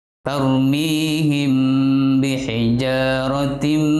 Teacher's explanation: sukun bertemu dengan bab maka dibacanya atau disebut Ikhfa Syafawi mim bacanya menyamarkan bacaan mim sukun samar antara mim dan ba